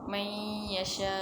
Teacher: Bacaan huruf nun mati dimasukkan ke dalam huruf ya dan didengungkan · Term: idgham ma'al gunnah